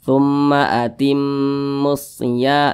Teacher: disebut juga dengan Idgham Syamsiah karena dia cara bacanya itu diidghamkan Jadi huruf lamnya ini dia tidak dibaca langsung masuk ke huruf Shad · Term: alif lam syamsiyah